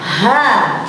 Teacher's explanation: ha ini terdapat di makhraj halqi, yaitu tenggorokan